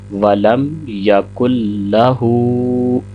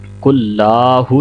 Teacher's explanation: لام کو لمبا نہیں کریں گے، کل لاہو نہیں کہیں گے، لام کے اوپر زبر ہے تو 1 سیکنڈ اس کو پڑھیں گے، اور ہا کے اوپر الٹا پیش ہے تو اس کو 2 سیکنڈ لمبا کریں گے